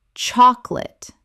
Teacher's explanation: Only two syllables in natural speech. The middle vowel disappears entirely.